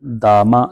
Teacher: میم کو کھینچ کے نہیں پڑھنا، میم زبر ما، بغیر کھینچے بغیر جھٹکا دیے معروف پڑھیں گے